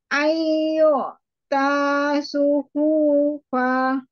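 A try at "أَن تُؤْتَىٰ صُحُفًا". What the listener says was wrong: Suhufa. Pendek. Jangan dipanjangkan yang panjang.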